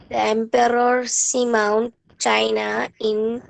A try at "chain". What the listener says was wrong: chain. Chain. It's not China, beta. It's chain in the Pacific Ocean.